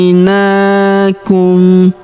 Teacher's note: Huruf na kita panjangkan dua harakat karena terdapat alif kecil di depannya.